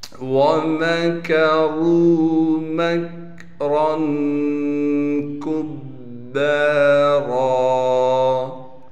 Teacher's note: میم کو کاف سے ملائیں گے اس لیے کہ کاف ساکن ہے، میم کاف زبر مک۔ را پر دو زبر ہونے کی وجہ سے را پر غنہ بھی کریں گے یعنی اخفا کریں گے، اور را کو موٹا کر کے پڑھیں گے۔ کاف کو باریک پڑھنے کے ساتھ کاف کو آگے با سے ملا دیں گے اس لیے کہ با پر تشدید ہے، تشدید ہونے کی وجہ سے تھوڑا سا ٹھہراؤ رکھیں گے، اور با کے بعد الف ہونے کی وجہ سے با کو ایک الف کے مقدار کھینچیں گے۔